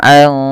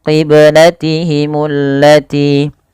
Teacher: Nah, di sini yaitu ada bacaan ikhfa hakiki, yang dimana suara nunnya dibaca dibaca dengan menyamarkan suara nunnya kepada huruf qaf. Karena huruf qaf agak jauh ya daripada makhraj huruf nun.